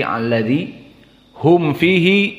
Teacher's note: mimnya harus jelas tidak gunah dan tidak idgham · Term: Idhar syafawi